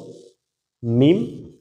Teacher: দুই ঠোঁটের শুকনো অংশ দুটো যদি একত্রিত করে বলেন মিম, তাহলে কিন্তু উচ্চারণটা সঠিক হয়ে যাইতেছে মিমের।